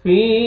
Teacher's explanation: या मद है या जज़म से पहले ज़ेर, फा को आपने खींचना है